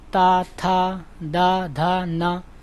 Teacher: जिनमें जीभ दंत में लगती है तो वो दंत व्यंजन कहलाते हैं